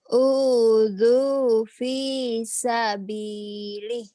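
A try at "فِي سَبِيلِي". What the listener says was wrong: Nggak usah betulnya nggak usah neken-neken kenceng-kenceng juga boleh. Udzu fi sabili tuh ya ditekan-tekan. Nah yang tekan-tekan itu untuk lagu dibuat mesra, penekanannya buat halus.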